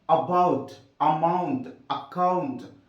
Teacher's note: దాన్ని పలకాల్సిన విధానం ఏంటంటే అబౌట్, అంటే వెరీ షార్ట్ ఆ అనుకోండి, అది కూడా కొంచెం గొంతు లోపల నుండి పలకాలి